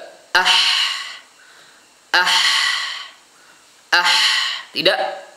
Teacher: ketika disukunkan masih ada suaranya juga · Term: rakhawah